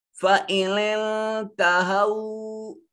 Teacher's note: नून साकिन के बाद ता हरूफ इख्फा में से है, नून को अपने मखरज में छुपाएंगे।